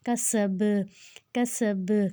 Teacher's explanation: اب سین جو ہے اس میں سیٹی والا ہے, کاف جو ہے وہ پتلا ہے, با کے اوپر جزم ہے, اس کو ہم نے ہلا کر پڑھنا ہے · کاف کو موٹا نہیں کرنا, پتلے والا کاف ہے. کسب سین کی سیٹی. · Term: قلقلہ